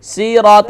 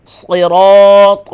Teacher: صراط نہیں، دیکھیں صاد اور سین میں فرق کریں. صاد ہوگا فل ماؤتھ